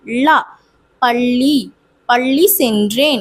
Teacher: பொது லகரம் அப்படின்றது எப்படின்னா நாக்கு நடுவண்ணத்தை தொடணும்